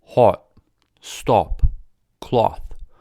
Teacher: the british back open rounded vowel o does not exist in american english in britain words like hot stop cloth are all pronounced with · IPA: /ɒ/